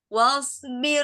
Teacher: ro-nya di sini tarkik karena sebelumnya berharokat kasroh.